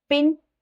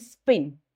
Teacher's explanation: one P is aspirated and another is not aspirated, that is unaspirated. So the P which is aspirated is different from the unaspirated.